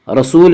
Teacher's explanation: رسول واو مدہ، واو مدہ وہ واو جو ساکن ہو اور اس سے پہلے پیش ہو، واو مدہ کو ایک الف کے برابر کھینچ کر پڑھیں گے